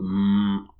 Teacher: feel the vibration in your nose. That's a nasal sound.